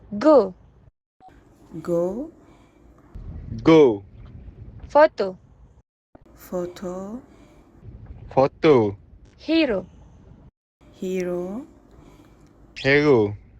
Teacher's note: only final vowels were lengthened